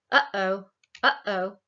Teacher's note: like between the uh and the o there's this glottal stop · We actually have a glottal stop when we say something like uh-oh, uh-oh. Like between the and the o, there's this glottal stop, but it's not a phonemic difference in our language.